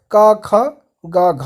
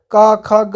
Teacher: अगर आप का खा गा बोलेंगे तो आपके कंठ से आवाज आएगी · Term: कंठ ध्वनियाँ